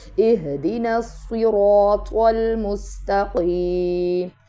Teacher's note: مستقیم میں قاف کو موٹا کریں گے